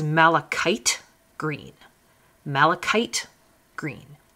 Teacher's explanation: It's got a CH in the middle, which you'd think would be like the ch sound, but in chemistry, in this word anyway, it's not. It's a k sound. So this is malachite green.